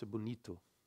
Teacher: The O becomes U, okay?